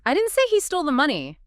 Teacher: What about stressing he? I didn't say he stole the money. The spotlight is now on the person.